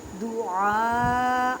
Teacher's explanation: الف سے پہلے زبر بڑی مد 6 الف کی مقدار میں کھینچ کر پڑھیں